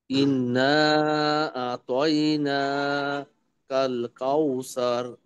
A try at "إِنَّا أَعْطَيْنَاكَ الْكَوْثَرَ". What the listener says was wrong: আরেকটু, ইন্নাটা একটু গুণা করি। ইন্না আতাইনাকাল কাউসার। ইন্না আতাইনাকাল কাউসার। إنا أعطيناك الكوثر. كوثر، كوثر. ثر، ثر، ثر، ثر.